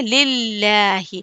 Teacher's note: کھڑا زبر ہے، اس کو ایک الف کے برابر کھینچیں گے